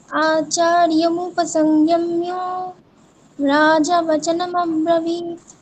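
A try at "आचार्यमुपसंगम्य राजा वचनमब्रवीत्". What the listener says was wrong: হলো না, আপনি অনেকগুলো ভুল বললেন। সংগম্যও বলে দিলেন, ময় ময় জফলা ওকার বলে দিলেন, ওখানে কিন্তু ময় জফলা ওকার নেই। সংগম্য অকার। তারপর আবার রাজা, ওখানে জয় আকার আছে, আপনি জয় অকার বললেন, রাজা বচন ওরকম বলে দিলেন, ওখানে আকারটা টানতে হবে তো। আচার্যমুপসংগম্য রাজা বচনমব্রবীত, বলুন।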